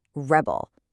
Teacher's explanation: As a noun, the stress is on the first syllable